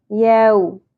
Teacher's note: हरफ लीन म जबर, एक ही जबर है ज्यादा नहीं खींचेंगे